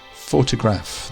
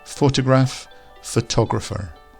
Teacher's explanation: Photograph, the stress is at the start, whereas photographer, the emphasis moves to the middle.